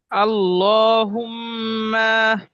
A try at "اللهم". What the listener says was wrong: আল্লাহুম্মা, মা টান দিয়ে যাবে না ।